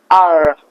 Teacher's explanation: Whenever the American people pronounce the R, they just curl their tongue a little bit, curl their tongue. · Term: American accent R